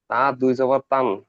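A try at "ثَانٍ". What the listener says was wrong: তা নয়, এটা অক্ষরটা দেখেন সা রয়েছে, সা দুই জাবার সান।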